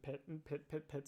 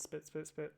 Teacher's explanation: You'll notice that the pit P is aspirated, as opposed to the spit P is unaspirated. No air comes out after it. So the question then becomes, okay, well, what's going on here?